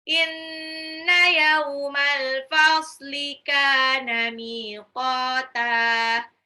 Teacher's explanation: Inna, nunnya gunnah, yauma, yaunya itu sifat lin, al-fasli, alif lam qamariyah, kana, kafnya mad tabi'i 2 harokat, miqata, mimnya 2 harokat, qafnya 2 harokat, ta-nya di belakang mad iwad.